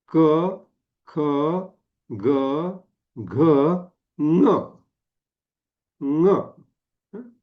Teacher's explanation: हा नचा उच्चार तो कंठामधून होतो म्हणजे हा जो न आहे ना तर याला आपण अनुनासिक अस म्हणतो